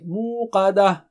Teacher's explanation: Qa is thick and high.